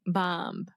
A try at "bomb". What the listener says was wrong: you're still saying a b at the end